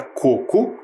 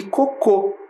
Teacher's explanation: a palavra coco é uma palavra paroxítona o que que significa isso tem a penúltima sílaba tônica e a palavra cocô é oxítona tem a última sílaba tônica